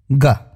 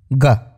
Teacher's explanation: उसे तालू कहते हैं इसे इंग्लिश में पैलेट भी कहते हैं तो जब आप ग का उच्चारण करते हैं तो आपकी जीभ का ऊपरी हिस्सा आपके तालू यानी पैलेट को बहुत ही हल्के से टच करता है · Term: कोमल तालव्य ध्वनि